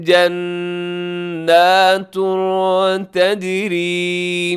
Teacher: جناتن کے اوپر تنوین کے بعد تا اخفا کریں گے اور تجری جیم اس میں ہوگا قلقلہ، را ہوگی باریک۔